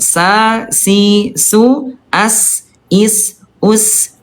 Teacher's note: huruf sin dia tipis turun pangkal lidahnya